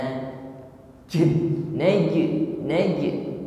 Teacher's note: tertahan aliran nafas ketika mengucapkan huruf jim, jadi tidak disertai dengan angin, bukan najwa, bukan naj ya, nafasnya tertahan ketika mengucapkan huruf jim. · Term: al-jahru